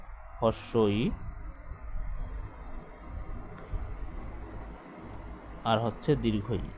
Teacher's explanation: এই ধ্বনি দুইটা উচ্চারণের সময় জিহ্বা এগিয়ে আসে। কোথায় এগিয়ে আসে? মুখের সামনে এগিয়ে আসে।